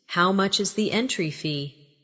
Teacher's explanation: Stress entry fee so it's clear.